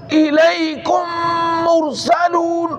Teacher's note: ادغام شفوی کا مطلب یہ ہے کہ ایک میم دوسری میم کے اندر ہو کر ایک مشدد میم بن جائے گا